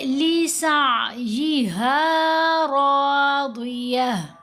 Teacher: रा के ऊपर ज़बर है, रा को मोटा पढ़ेंगे, और दौद है ही हरूफ मुस्तालिया में, ये हमेशा ही मोटा पढ़ा जाता है।